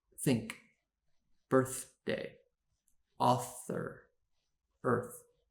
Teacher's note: in the unvoiced sound the th has no voice to accompany it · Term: unvoiced th sound